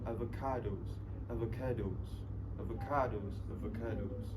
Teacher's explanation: in both of this, the word avocados, they put the stress in the third syllables.